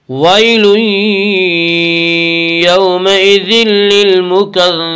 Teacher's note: یومئذ للمکذبین میں ادغام بلا غنہ ہوگا۔ اس کا قاعدہ ہے کہ نون ساکن اور تنوین کے بعد اگر حروف یرملون میں سے کوئی حرف آئے تو ادغام ہوگا۔